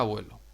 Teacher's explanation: La vocal tónica en esta palabra sobre la que recae la fuerza de la voz es la E. Esta es átona.